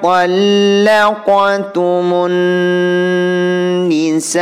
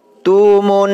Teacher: Bunyi mo di sini dimasukkan terhadap non dan disertai dengung 2 harokah. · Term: alif lam syamsiyah